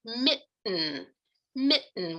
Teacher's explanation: If we think about a word like mitten, mitten with that glottal stop in the middle, the tongue's not even producing that allophone of T.